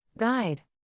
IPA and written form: ɡaɪd (Guide)